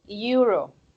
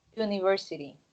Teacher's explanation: So the thing is, yeah, it starts by the vowel E, but this together, okay, they sound more like this, euro. So the pronunciation is of a Y, and Y is a consonant.